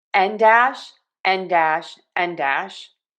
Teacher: Air is moving out of my nose. Another tip, N in English connects to the vowel and also the N in English will be longer than many of my students from many different language backgrounds make that sound.